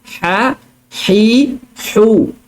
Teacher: Jadi huruf ha keluar daripada tengah kerongkong yang kita sempitkan.